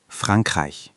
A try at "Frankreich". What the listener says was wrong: The ch sound in Frankreich is a bit tricky. It's a soft, guttural sound, almost like clearing your throat very gently, or like the H in huge, but further back in your throat. It's not a hard K sound.